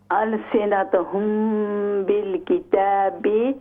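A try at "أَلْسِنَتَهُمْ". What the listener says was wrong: अलसिनतहुम, ता का ज़बर ठीक करें, ता का ज़बर ठीक कीजिए। अलसिनतहुम बिलकिताबि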